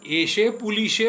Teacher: રનો લ થશે, દંત્ય સનો તાલવ્ય શ થઈ જશે, અને પાછો અકારાંત શબ્દ એકારાંતમાં ફેરવાઈ જશે.